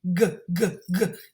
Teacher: This is because the final sound is a voiced consonant, which means we use our chest and our throat. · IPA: /g/